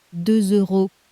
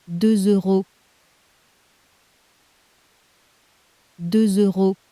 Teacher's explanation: Listen to 2 euros and catch the little Z gluing the words together. 2 euros On paper that S at the end is silent, but in front of a vowel it wakes up as a Z. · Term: liaison